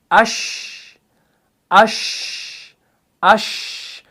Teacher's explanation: لیکن ایک بات کا خیال رکھیے گا، اس کے اندر تفشی ہے، یعنی اس کے اندر کیا ہو رہا ہے کہ شین کو ادا کرتے وقت آواز جو ہے یہ منہ کے اندر پھیل جاتی ہے، سپریڈ ہوتی ہے